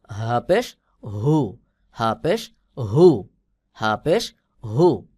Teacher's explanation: হবে যেমন হা পেশ হু হা পেশ হু আর এটা হল হলকের শুরুতে থেকে মোটা করে উচ্চারণ হবে